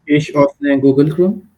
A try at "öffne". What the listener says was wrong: the way you said it sounded like oh, it should be okay, öffne. Okay. So try to say oh and close your mouth,